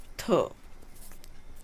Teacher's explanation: स्पर्श, दंत, अघोष और महाप्राण वर्ण